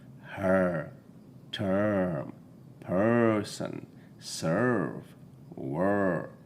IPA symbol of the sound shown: ɜː